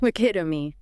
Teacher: Stress on pit. Short final vowel.